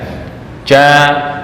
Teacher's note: Jim itu makhrajnya di tengah lidah